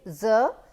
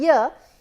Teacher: in z the articulators are closer and they can actually block the air more than the sound year